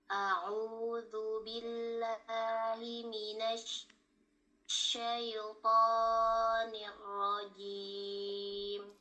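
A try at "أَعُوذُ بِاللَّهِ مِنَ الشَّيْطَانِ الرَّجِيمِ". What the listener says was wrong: Tonya sedikit kepanjangan, manya dibuka lagi.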